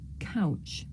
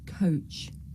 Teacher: difficult to tell the difference between the diphthong ow and another diphthong o.